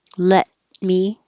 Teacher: you're not going to release the t just hold it